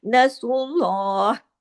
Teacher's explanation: نصر اللہ میں سواد ہیوی اور را ہیوی، اور لام اللہ کے نام میں لام ہیوی ، یہ تین حرف جو ہیں ہیوی پڑھے جائیں گے، نصر